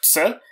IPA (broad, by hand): kts